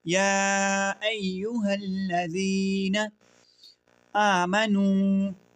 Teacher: یا ایوہ الذین آمنوا، اب یہ دیکھیں اس میں یہ مد ہے، یہ اس میں حمزہ اسی کلمے میں ہے، اب حمزہ اب دوسرے کلمے میں آ رہا ہے تو یہ کیا ہو گیا؟ یہ مد منفصل ہو گیا۔ تو آپ نے 2 سے 3 الف کی مقدار اس کو لمبا کرنا ہے۔